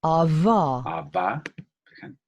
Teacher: Está la versión bilabial fricativa vocalizada.